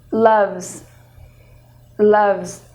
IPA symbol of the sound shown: z